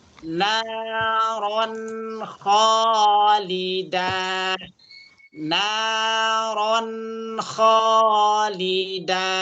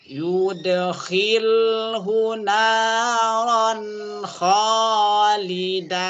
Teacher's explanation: Yudkhilhu naron, ron tanwin ketemu dengan kha, idhar halqi namanya. Lidahnya ke langit-langit, ke gusi atas. Suara n-nya itu jelas.